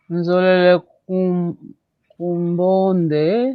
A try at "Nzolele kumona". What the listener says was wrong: Cuidado, aqui não tem N, né? Cuidado. Zolele kumbone. Zolele kumona.